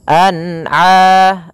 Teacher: an'a harus dibaca dengan jelas, tidak boleh dibaca dengan bacaan dengung · a-nya harus dibaca dengan jelas, jangan sampai huruf ain masuk ke pada rongga hidung. An'a. Kemudian pada lafal a sendiri ada hukum tajwid berupa mad tabi'i, yaitu kita panjangkan sepanjang 2 harakat. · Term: izhar halqi